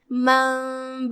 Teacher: इक़लाब का माना है पलट देना, लिहाजा हम ये नून को मीम में पलट के गुन्ना के साथ ये हुक्म को अदा करेंगे।